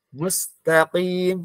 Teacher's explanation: qaf itu kan kemarin maksudnya ada di pangkal lidah, ya. Pangkal lidah menyentuh langit-langit yang lunak